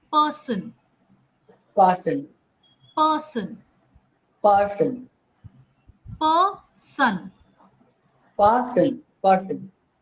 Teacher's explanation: We have to say a sound and the r will be very very soft